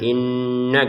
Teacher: Ada nun bertasydid ini kita dengungkan. Pusat dengungannya ada di rongga hidung. Sehingga ketika kita mengatakan inna gitu, di rongga hidung kita ada dengungan.